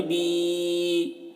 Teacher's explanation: اسے بھی کھینچ رہے ہیں کیونکہ یہ یا مدہ ہے، یا ساکن سے پہلے زیر ہے، تو اسے بھی ایک الف کے برابر کھینچیں گے